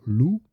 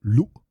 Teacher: Notice well, there's a glottal stop, so it's not lu, but lu.